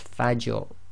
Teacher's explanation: the Fa is light, empty mouth, you must maintain that, and then you go into a heavy mouth on the Ra. So that's Fajr.